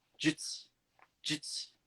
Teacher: It's jutsu, but we devoice both the U's.